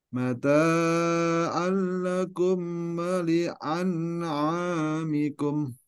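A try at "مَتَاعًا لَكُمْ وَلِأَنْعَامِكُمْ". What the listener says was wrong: Panjang antara ta sama a itu sama sebenarnya ya. Jadi tanya tadi kepanjangan itu. Mata'an lakum.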